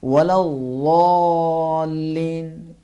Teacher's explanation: اس حرف کو باریک ادا نہیں کرنا ہے، اردو کی طرح ادا نہیں کرنا ہے، زبان کو سائڈ پہ لگا کے تھوڑا سا بھاری ادا کریں گے